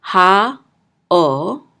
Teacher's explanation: When the dot is over it, it will say o. So ayin is silent, so we're just going to say o